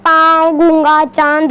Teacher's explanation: अनुनासिक का उच्चारण नाक और मुंह से होता है